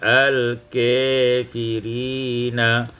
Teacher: dibaca imalah fathah kaf dan alif menjadi al-kafirina